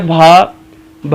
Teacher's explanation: भा का उच्चारण स्थान होता है ओष्ठ